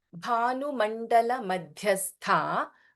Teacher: Bha is Mahaprana and then Dha is Mahaprana in Madhya. And again last letter of Madhyastha, Tha is Mahaprana.